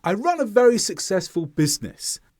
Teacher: See how the tone falls through the sentence. Falling intonation indicates certainty.